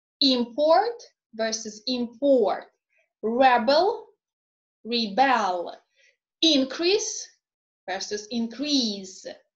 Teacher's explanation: many everyday nouns and adjectives of two-syllable length are stressed on the first syllable, whereas the verb is stressed on the second syllable